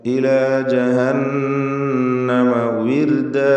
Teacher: വാവ് ചുണ്ടുകളിൽ നിന്ന് തന്നെ വരണം. താഴെ ചുണ്ടും മേലെ പല്ലും ചേർത്ത് ഉച്ചരിക്കരുത്. വിർദ, റാഇന് തർക്കീഖാണ്, നേർപ്പിച്ചുകൊണ്ട് റാഇനെ ഉച്ചരിക്കണം.